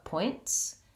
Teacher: be make the t sound and then keep the air moving my tongue drops down to the s position from the lifted up t position and then it sounds just like a t and an s together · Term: ts sound